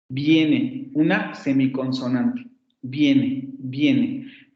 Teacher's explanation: esa vocal, en un contexto como en viene, se puede realizar como un fonema aproximante palatal sonoro